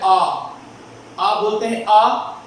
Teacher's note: विवृत, आप बोल के देखो, यानी पूरा मुंह खुल जाता है